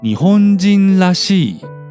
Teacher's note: The らしい in the lower example is the suffix that means essential nature, and it's the leader type. So the nucleus of 日本人 disappears, but the nucleus of らしい remains, as in 日本人らしい.